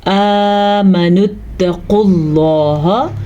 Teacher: قاف کو ہم موٹا پڑھیں گے کیونکہ قاف ہمیشہ موٹا پڑھا جاتا ہے۔